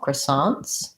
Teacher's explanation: And they say the TS, unlike the French, who may not say that plural sound. Croissants, second syllable stress. · obviously americans will say it as croissants kind of a schwa they say that as i guess an ah vowel